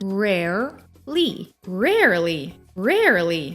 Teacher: slightly shifting the W sound into R sound